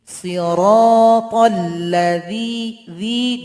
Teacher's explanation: Siratal ladzi, zi dua harakat. Huruf dzanya ujung lidah dengan ujung gigi.